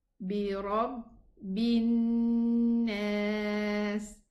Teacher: the lam is not going to be pronounced. I'm going to move from the ba kasra to the noon shadda. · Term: lam shamsiyya